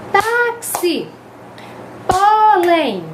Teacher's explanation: quando eu pronuncio a paroxítona Agora não é mais da última é a penúltima